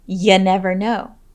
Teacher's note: in more casual settings you might hear someone pronounce the word you as ya